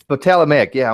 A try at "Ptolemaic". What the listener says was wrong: You don't pronounce the P. You don't pronounce the P.